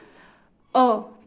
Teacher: मध्य स्वर का मतलब क्या होता है कि जीभ के मध्य भाग से बोले जाने वाले स्वर को क्या कहते हैं हम, मध्य स्वर।